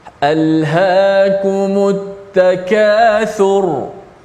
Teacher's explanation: Maka ra pada ayat pertama di hujung tu bila mati kita kena baca dalam keadaan tebal.